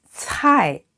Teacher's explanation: 招牌 and this 菜 the vowel is ai, is I, and it is a falling tone, so going down, fourth tone.